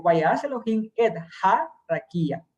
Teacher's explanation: Hace un pequeño acento en ha.